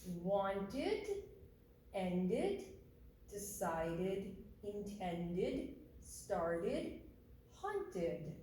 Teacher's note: the T and D sound ending gets the id extra syllable